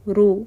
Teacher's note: رو پیش کے اوپر رک رہا ہے، اگر آپ اس کو پڑھیں گے پیش کو تو اس کو مدہ نہیں بنانا، 1 کاؤنٹ کا کریں گے صرف